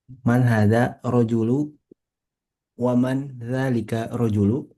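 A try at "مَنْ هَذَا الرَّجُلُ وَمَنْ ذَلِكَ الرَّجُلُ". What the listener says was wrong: Nah, ditasydid ya. Man hadzal rajulu wa man dzalikar rajulu.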